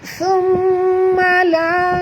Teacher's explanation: mim bertasydid, wajib dengung, 2 harakat, wajib al-gunah